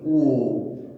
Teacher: ও কিন্তু মুখটা কুঞ্চিতই হচ্ছে, এই জন্য একে বলছি অর্ধ কুঞ্চিত